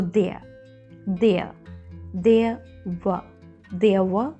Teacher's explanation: letter r will be silent as it is silent in British English pronunciation